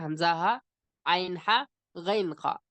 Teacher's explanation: नीचे से हलक के नीचे से हमजा हा, बीच से जो है आइन हा, और आखिर से जो ऊपर का हिस्सा है उससे गैन खा